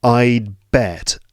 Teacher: when I say I'd bet, my tongue does go into that D position.